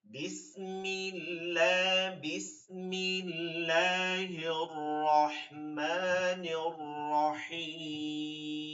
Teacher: আল্লাহ শব্দের ডানে জবর পেশ থাকলে মোটা আর এটা আছে জের জের হলে চিকন